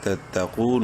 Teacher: قاف کو منہ بھر کے پڑھتے ہوئے ایک الف کے برابر لمبا کریں گے، واو مدہ ہے۔ تتقون، نون زبرنا، تتقون، اور وقفاً تتقون ہو جائے گا۔